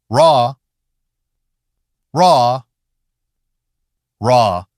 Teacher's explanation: It's also one of the hardest for many learners, especially if your language has a tap or flap R. English ruh is not a tapping sound. The tongue tip curls upward, but if you make it hit hard, it actually sounds less natural. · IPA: /r/